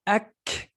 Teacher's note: Ak with the release of air at the end of it.